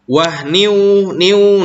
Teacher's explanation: disebutnya idgham bi gunnah atau ma'al gunnah. Karena tanwin menghadapi waw.